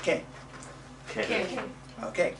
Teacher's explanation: the k is so short that you hardly hear it